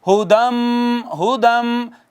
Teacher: تو یہ جو تھا نا ہدن تھا، ہدن، یہ نون اس میں سے ختم ہو گیا، نون تنوین کو ضم کر دیا میم میں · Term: ادغام